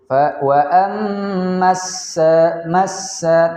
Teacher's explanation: alif lam tidak dibaca, langsung masuk kepada huruf sin. Wa ammassa, massa, tanpa membaca alif dan lamnya. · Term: alif lam asy-syamsiyah